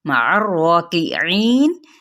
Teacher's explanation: عین کو وسط حلق سے ادا کرتے ہوئے را کے ساتھ ملائیں گے ، را پہ کھڑا زبر ہے تو اس کو کیا ہے